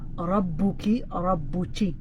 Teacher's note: In some dialects, they'll flip the ka into a cha. So instead of rabbuki, rabbuchi, they'll flip the ka into a cha, which is actually called a kashkasha.